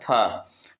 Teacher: फ का उच्चारण स्थान होता है बोलो ओष्ठ होता है।